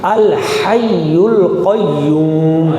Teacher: ہا کو گلے کے درمیان سے نکالیں گے